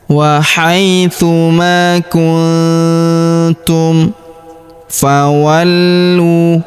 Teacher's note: Huruf nun sukun bertemu huruf tu. Maka nun sukunnya melebur ke huruf tu. Kita baca dengung dan samar. Dengungnya kita tahan dua sampai 3 harakat ya.